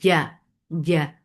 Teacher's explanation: in jeen there should not be any sound of ch